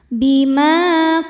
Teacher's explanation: Sebab ada alif yang sebelumnya baris fathah. Cara bacanya dipanjangkan dua harakat. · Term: mad thobi'i zohiri